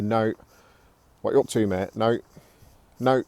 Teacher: Now don't forget we drop the T, so when people say it, it'll be Nowt.